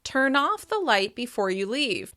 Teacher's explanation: By stressing off, I'm making it clear that the phrasal verb is being used to describe an action.